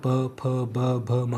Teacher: आपके दोनों होठ ना चिपक रहे होंगे दोनों होट चिपक रहे होंगे इसलिए इनको बोलते हैं उष्ट इसी · वे व्यंजन जिनका उच्चारण दोनों होठों को मिलाकर किया जाता है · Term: प वर्ग